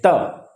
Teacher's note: तो जीभ तुरंत दांत के पास एकदम कायदे से टच करती है